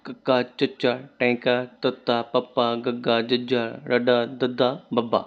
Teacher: ਜਿਹਨਾਂ ਵਿਅੰਜਨਾਂ ਦੇ ਉਚਾਰਨ ਵਿੱਚ ਥੋੜੀ ਮਾਤਰਾ ਵਿੱਚ ਸਾਹ ਬਾਹਰ ਨਿਕਲੇ ਉਹ ਅਲਪ ਪੁਰਾਣ ਵਿਅੰਜਨ ਹੁੰਦੇ ਹਨ।